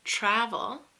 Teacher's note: it preferred two hours but in a word like travel which has the emphasis on the first syllable and the second syllable is weak